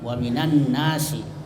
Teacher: kita tidak membaca itu alifnya dan lamnya, jadi langsung dimasukkan dari nun ke nun